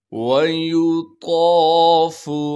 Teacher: بغیر کھینچے پڑھنا ہے، یا کو بھی بغیر کھینچے پڑھیں گے، طا کو موٹا کر کے پڑھیں گے، اور طا کے بعد الف مدہ ہونے کی وجہ سے طا کو ایک الف کے مقدار کھینچنا ہے ، اس فا کو بغیر کھینچے پڑھیں گے، عین کو صاف